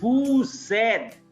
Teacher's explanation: So S is going to be pronounced as Z. Although vous independently, in case if you only utter the word vous, then S is silent.